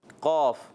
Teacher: زبان کی جڑ جب تالو کے نرم حصے سے لگتی ہے تو ادا ہوتا ہے قاف